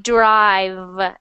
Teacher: that V sound is voiced